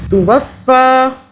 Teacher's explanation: ہو جائے گا۔ ثم، تا پیش تو، واو فا زبر وف، ایک فا کی ساکن آواز ہوگی، دوسری فا کھڑا زبر فا